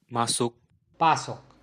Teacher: m and p are both bilabial sounds. They are both articulated with your lips together, so it would be easy for one sound to gradually change into the other.